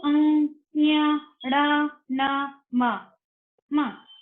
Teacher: ये नाक से निकलती है आवाज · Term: अनुनासिका